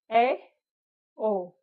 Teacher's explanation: समृत वो होते हैं कि जो बिल्कुल ही कम खुलते हैं, उनको समृत कहते हैं, लेकिन उससे थोड़ा सा ज्यादा होता है तो वो होता है अर्धसमृत स्वर। जैसे ए, ओ, ये हो गए अर्धसमृत स्वर। थोड़ा मुख थोड़ा खुला रहता है।